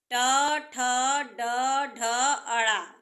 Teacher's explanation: इनका उच्चारण स्थान मुर्धा है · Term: ट वर्ग